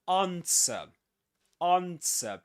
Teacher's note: You don't pronounce the W